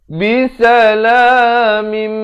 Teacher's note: Di sini idgham bi gunnah, daripada bisalamin jadi mim. Tapi jangan lupa dengungkan 2 harakat.